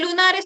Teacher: En lunares todos los fonemas consonánticos son alveolares. Verdadero. Ln r son alveolares.